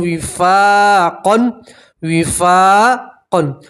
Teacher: فا کے ساتھ الف مدہ ہے اس لیے آپ ایک الف کے برابر کھینچیں گے اور 2 زبر کی تنوین کے اوپر آپ وقف کریں گے تو 2 زبر کی تنوین کو ایک زبر اور الف سے پڑھیں گے تو پڑھیں گے وفاقا، وفاقا، ٹھیک ہے۔